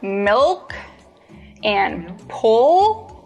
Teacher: when you produce the dark L, the back of your tongue bunches.